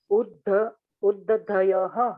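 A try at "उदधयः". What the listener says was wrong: Not Udda. There is no Udd. Uddadayaha.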